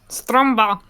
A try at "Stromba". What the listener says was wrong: No, there's not so much emphasis on the R, just Stromba. Why are you saying it like you got something in your mouth?